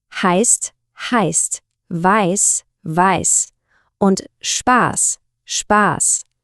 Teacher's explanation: ein stimmloses scharfes S